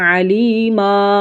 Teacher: For example 2 زبر کی تنوین کو ہم 1 الف سے بدل دیتے ہیں۔ علیمن کو جب ہم وقف کرتے ہیں تو پھر پڑھتے ہیں علیما، 1 الف کی مقدار جتنا کھینچ کر پڑھتے ہیں۔ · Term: وقف بالابدال